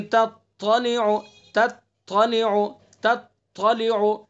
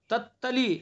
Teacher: دونوں کے اندر فرق پیدا کیا جائے گا صفت سے۔ تا کے اندر صفت استعلا ہے تو بلندی ہے اس کے اندر، تو اس لیے صفت سے فرق پیدا کریں گے۔